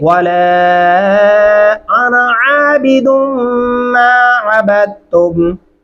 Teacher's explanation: आइन गले से अदा करेंगे, दुम गुन्ना करेंगे